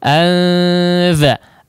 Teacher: Kemudian dari segi kesamaran dia yang versi sedang anza ya, bisa disentuhkan untuk posisi lidahnya, bisa disentuhkan tapi menyentuh halus saja ya, menyentuh halus dengan makhrajnya ya, antara kedua sisi makhrajnya, yaitu ujung punggung lidah dengan ujung dua gigi seri atas. Anza, atau bersiap ya, sangat dekat dengan makhrajnya. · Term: ausato